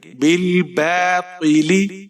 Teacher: بل، با کے اوپر کھڑی زبر ہے، اسے ہم ایک الف کی مقدار کے برابر کھینچ کر پڑھیں گے۔ بالباطل، طا کو آپ نے موٹا پڑھنا ہے، طا کے نیچے زیر ہے · با کے نیچے زیر ہے، لام ساکن ہے، با کو لام کے ساتھ ملائیں گے، بغیر کھینچے پڑھنا ہے۔ بل، با کے اوپر کھڑی زبر ہے، اسے ہم ایک الف کی مقدار کے برابر کھینچ کر پڑھیں گے